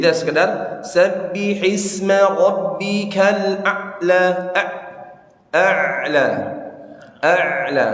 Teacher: huruf Ain sukun harus sedikit ada suara yang kita alirkan di situ